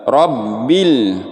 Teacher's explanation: Dan di sini ada alif lam sukun, lamnya mati. Nah, ini namanya alif lam qamariyah. Lamnya dibaca sempurna